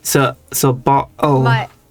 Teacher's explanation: some British dialects will replace the T's with the glottal stop